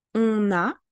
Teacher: we would link on into the sound a